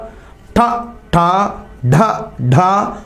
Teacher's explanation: next టవర్గం టవర్గం చదవండి అందరూ కూడా ట ట డ డ అన్న నాలుక మడతపెట్టి పరివేష్టిత జిహ్వా అంటారు